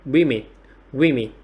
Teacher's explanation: trọng âm rơi vào âm tiết thứ nhất và cái nguyên âm của âm tiết thứ nhất chúng ta sẽ gọi là y dài nhá.